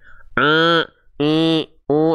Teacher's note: ada suara yang masih melipir ke rongga hidung. Nah, ini enggak boleh. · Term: sengau